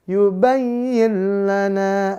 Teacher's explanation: ubinana ya jangan lupa pemirsa sekalian masuk langsung ke makhrajnya ya hurf lam di mana makhrajnya ujung lidah langit-langit depan tekannya di situ